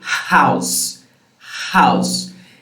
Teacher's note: glottal, the only thing that happens is that your vocal folds will approach slightly, but not very much. An example of sound that happens in the glottis is the sound, such as in house, house.